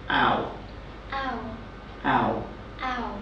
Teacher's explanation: your lips start wide very wide okay but they get very round as you finish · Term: the owl sound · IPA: /aʊ/